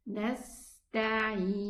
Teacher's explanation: But the ghunna is running. So this noon is neither shadida nor rikhwa. It's in between. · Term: tawassut